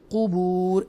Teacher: और ब ये हरूफ हल्किया में से आइन है, इसलिए बुअसिरा मा फिल क़ुबूर, वो मद्दा है, क़ुबूर वक्फ की सूरत में, और हम रॉ कसरा के साथ जो ज़ेर के साथ है हम उसको साकिना कर देंगे लॉजिकली वक्फ की सूरत में, क़ुबूर इस तरह अदा करेंगे।